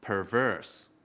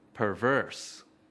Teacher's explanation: Từ perverse có hai âm tiết. Trọng âm của từ perverse ở âm tiết thứ hai.